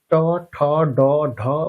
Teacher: তালু ব্যবহার করার কারণে এই বর্গের বর্ণগুলোকে বলা হয় তালব্য বর্ণ। ট বর্গীয় বর্ণ উচ্চারণের সময় আমাদের ব্যবহার করতে হয় মূর্ধা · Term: মূর্ধন্য বর্ণ